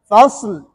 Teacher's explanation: اختلاس کی طرح۔ فصل، دیکھو صاد کے اوپر ہلکی سی حرکت کی آواز آئی، اس کو اختلاس کہتے ہیں